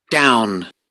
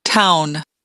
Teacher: It's more labialized than in the first picture. And so it seems like I heard that the second one is more labialized